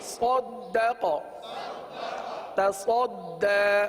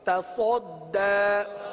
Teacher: تا باریک پڑھیں گے، صاد پر پڑھیں گے